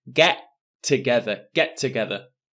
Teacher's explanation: for the pronunciation for get together notice there is only one t sound I don't say get together get together one t sound get